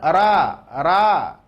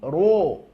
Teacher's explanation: Sedikit ro tebal tadi, ya, huruf tebal bunyi vokalnya adalah huruf o. Bukan ra, tapi ro.